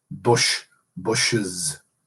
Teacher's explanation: you pluralize bush by adding an is, that is to say a vowel and a Z